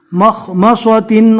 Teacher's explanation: مخ خو کو پور پڑھنا ہے اور صاد کو بھی